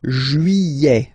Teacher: Don't pronounce this final T, E-T here at the end.